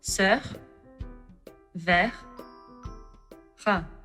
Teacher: The letter R is very particular in French, which some people find it hard to pronounce. It is uttered by putting your tongue at the back of the mouth.